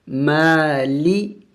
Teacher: میم کے اوپر کڑی زبر ہے، اس کو ایک الف کے مقدار لمبا کرنا ہوتا ہے